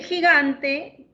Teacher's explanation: el sonido inicial en gigante es un fricativo velar, mientras que el sonido que está entre vocales es una oclusiva velar